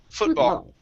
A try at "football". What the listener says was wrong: Instead of an oo sound, instead of foo, it's f. Foot. Football.